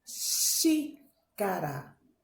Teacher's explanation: A sílaba forte é a antepenúltima. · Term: proparoxítonas